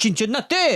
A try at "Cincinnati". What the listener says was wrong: It sounded like you had a CH. Cincinnati?